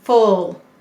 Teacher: it's saying uh before an l